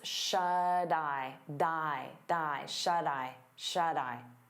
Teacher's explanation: we turn that T into a soft D because it's between vowels, and you'll hear it on both words.